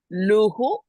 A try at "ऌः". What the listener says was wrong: Not luhu, it is lh. Lh. Roll your tongue. Lh. Lh. You can just you can make just make it a soft sound. Rh, rh, lh. You don't have to completely roll. Just touch the top of your palate.